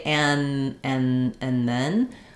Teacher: My tongue is already going to be in that TH position for the then, so it can be ready and it can do it quickly.